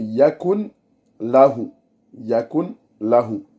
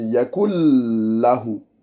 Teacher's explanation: Directement, on rentre le lem dans le nun. Donc, les deux règles de tajwid, c'est le nun qui rentre dans le lem, c'est idram bilarunna.